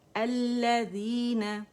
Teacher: यहाँ पे लाम का इदगाम हो रहा है लाम शमसी के अंदर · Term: लाम शमसिया